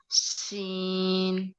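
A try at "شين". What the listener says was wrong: अच्छा, आपका सीन नहीं, ऐसे लग रहा है आप इसको सीन कह रही हैं। इसको आपने ना आवाज, जैसे मैं कह रही थी शावरिंग साउंड, हाँ, जैसे तुक्के नहीं फेंक रहे होते बच्चे, ऐसे ऐसे करके, ठीक है।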